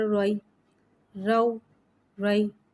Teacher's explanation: یا ساکن سے پہلے زبر آ رہا ہے، یالین ہو رہا ہے، لہذا یالین کو بغیر کھینچے بغیر جھٹکا دیے نرمی سے معروف پڑھیں گے اور زبر کو منہ کھول کے ادا کر کے پڑھیں گے